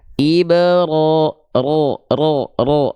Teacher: Nah, dia punya sifat namanya takrir. Jadi bergetar sedikit ya.